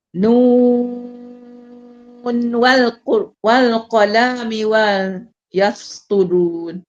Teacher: Kita tetap izhar juga walaupun kita sambung. Dia tidak jadi idgham.